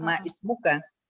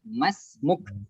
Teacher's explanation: Hamzatul wasl. Dia ketika didahului oleh kata yang lain, maka hamzah itu dianggap tiada sehingga tidak dibaca.